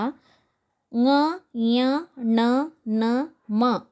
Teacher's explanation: ಅನು ಅಂತಂದರೆ ಸಹಾಯ, ನಾಸಿಕ ಅಂದರೆ ಮೂಗು, ಮೂಗಿನ ಸಹಾಯದಿಂದ ಉಚ್ಚಾರ ಮಾಡುವಂತಹ ಅಕ್ಷರಗಳು. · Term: ಅನುನಾಸಿಕ